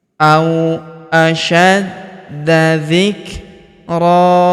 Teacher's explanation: tanwin an kita rubah menjadi fathah atau a dan kita panjangkan dua harakat